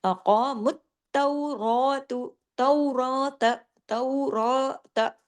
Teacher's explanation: खड़ा जबर एक अलिफ का कायम मुकाम है, तो इसमें रा को हैवी भी करेंगे और रा को थोड़ा लंबा खींचेंगे भी। कितना? जितना अलिफ पढ़ा जाता है।